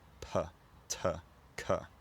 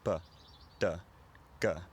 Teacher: So one of those things is that in the south of England, the consonants p, t, k are aspirated in a lot of positions in a word, which means they're released with a burst of air